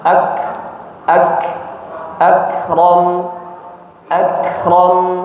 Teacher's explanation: Ak ada sedikit udara keluar setelahnya.